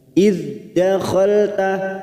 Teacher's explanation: idh dal sukun, hati-hati memantul karena bukan qalqalah, kita tahan. Idh dakhalta nun yang bertasdid gunnah musaddada.